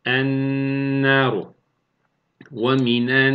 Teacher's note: Nun harfine katılıyor ve şeddeli bir nun olarak 1,5 elif miktar tutarak okuyoruz. · İdgam-ı şemsiye me'al gunne, lam-ı tariften sonra gelen harf nun harfi olursa idgam gunneli yapılır ve 1,5 elif miktarı tutulur · Şeddeli nun olarak okuduk mesela. Ennâru kelimesi elnâruydu. Şeddeli nun olarak okuyoruz.